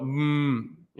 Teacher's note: It's called bilabial sound. There's a lip sound. So you go, the lips come together